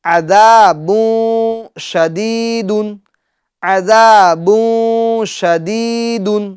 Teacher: ذال میں ہمیں زا کی آواز پیدا نہیں کرنی ہے